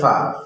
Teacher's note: ফা হইল সামনের দুই দাঁতের আগা নিচের ঠোঁটের পেটের সাথে লাগাইয়া ফা